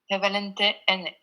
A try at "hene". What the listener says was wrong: Il faut faire gaffe, c'est pas le H muet, on le sort hene.